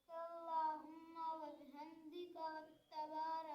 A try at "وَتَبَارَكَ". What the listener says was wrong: وتبارک تا پہ شد نہیں وتبارک اسمک